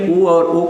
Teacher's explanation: छोटा ऊ और बड़ा ऊ दो ऐसे स्वर हैं जिनके उच्चारण में हमारे ओठ आपस में एक बार छूते हैं, इसलिए ऊ और ऊ को बोला गया ओष्ठ।